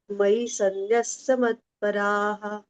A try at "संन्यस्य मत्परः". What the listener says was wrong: double न आणि त्याला य आहे बरेच जण सनस्य म्हणतात म्हटल्या जात तसं नाही म्हणायचं